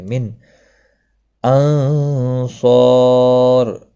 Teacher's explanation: صاد مستعلیہ ہے، پر پڑھا جائے گا، الف مدہ بھی ہے، ایک الف کے برابر کھینچ کر پڑھیں گے، اور را ساکن پڑھا جائے گا، وقف کی صورت میں پر بھی پڑھا جائے گا کیونکہ پچھلے حرف کے اوپر زبر ہے، پر بھی پڑھا جائے گا، وقف بالاسکان ہوگا۔